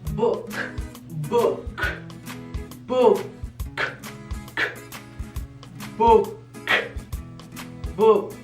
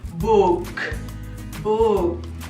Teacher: la doble O se pronuncia como una U larga, como una U súper larga.